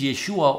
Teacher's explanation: That is for those who understand pointing the vocal shiwa is the pointing associated with the yod in this name. The a sound of ya gets a vocal reduction because of the accent on the final syllable.